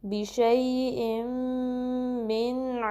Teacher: कसरत इनके बाद मीम आ रहा है तो यहाँ पर इदगाम होगा, गुन्ना का भी टाइम देंगे